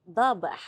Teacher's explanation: Gantikan tanwin baris atas kepada baris fathah sahaja yang kita panjangkan bacaan tu dengan kadar 2 harakat. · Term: mad iwad